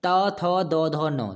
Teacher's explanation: तो वर्ग में त थ द ध न, दंत तो आसान है। देखिए आपकी जो जीभ है वो दांत को टच कर रही है